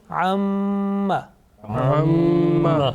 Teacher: Now you see that there is a sustained continuous nasal sound, okay, about 2 seconds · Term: Mim Ghunnah